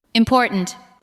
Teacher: The second part receives the strongest beat.